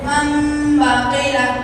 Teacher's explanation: تنوین یا نون ساکن کے بعد با آئے تو نون کو من سے بدل کر غنہ اور اخفا کے ساتھ پڑھیں گے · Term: اخلاق